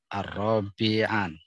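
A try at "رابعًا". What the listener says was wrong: Rabi'an. Tanpa alif, tanpa alif lam.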